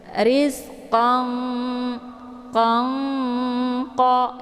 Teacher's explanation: Tapi tanwinnya ini disamarkan dulu ya, tidak langsung dimasukkan ke dalam qa. Jangan qang qa ya, tapi qang qa ya, ada sedikit bunyi samar-samarnya. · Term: ikhfa ab'ad